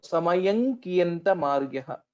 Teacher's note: the anuswara here will change or will get transformed into the fifth letter of kavarga, which is nga, ka, kha, ga, gha, nga.